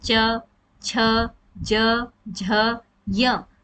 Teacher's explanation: हमारी जो ध्वनि होती है वह तालू से आती है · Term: तालव्य व्यंजन